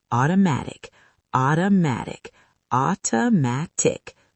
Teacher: 4 syllables. Stress on the third.